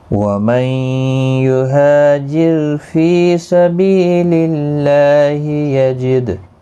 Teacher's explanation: ہا الف مدہ ہے، فی یا مدہ ہے، بی یا مدہ ہے، تینوں کو ایک ایک الف کی مقدار کے برابر کھینچ کر پڑھیں گے۔ اور را ساکن سے پہلے زیر ہے، اس لیے را ساکن باریک پڑھا جائے گا۔ باقی کسی بھی حرکت والے حرف کو کھینچنا نہیں۔ · وَمَن نون ساکن کے بعد یرملون کا یا ہے، ادغام مع الغنہ ہوگا، غنہ کے ساتھ پڑھیں گے۔ ہا الف مدہ ہے، فی یا مدہ ہے، بی یا مدہ ہے، تینوں کو ایک ایک الف کی مقدار کے برابر کھینچ کر پڑھیں گے۔